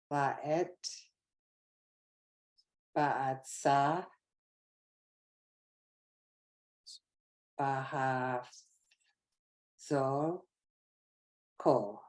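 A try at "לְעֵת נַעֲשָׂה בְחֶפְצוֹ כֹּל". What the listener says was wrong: This here's a nun versus a bet, right? Che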